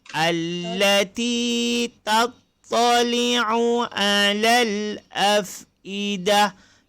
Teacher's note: Tattali'u alal, semua ain masuk sedikit dekat halqum.